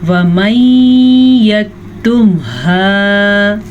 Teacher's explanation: نون ساکن کے بعد یمون میں سے یا ہے تو ہم دونوں کو آپس میں غنّے کے ساتھ ملا کے پڑھیں گے